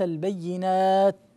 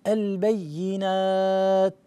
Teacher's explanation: التاء تهمس، هكذا لابد أن تهمس، حروف الهمس المعروفة، فحثه شخص سكت، هاي التاء. فالتاء إذا كانت ساكنة لا تظهر إلا بالهمس، والهمس والنفس الخفيف الذي يخرج مع الحرف، انت هنا لم تظهر التاء، قلت البينات، لا نسمع شيئا، البينات، هذا النفس الخفيف هو الذي يظهر هذا الحرف. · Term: تاء الساكنة